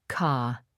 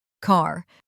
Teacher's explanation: In many accents of British English, the R sound is not pronounced after a vowel, A, E, I, O, U, especially at the end of a word. In most American accents, the R sound is pronounced. The British pronunciation, car.